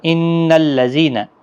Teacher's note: ان نون مشدد پر غنہ ہوگا